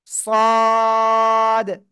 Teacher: মোটা আওয়াজে আমরা উচ্চারণ করব, চারে লিপ টেনে পড়বো। জিহ্বার আগা সামনের নিচে দুই দাঁতের পেট ও আগার সাথে লাগিয়ে মোটা আওয়াজে উচ্চারণ করব